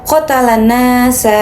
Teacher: Karena alif lam syamsiyah terjadi karena alif lam bertemu huruf nun sehingga lam tidak dibaca dan langsung masuk ke nun. Selain itu terdapat mad thabi'i pada nun yang dibaca panjang dua harakat.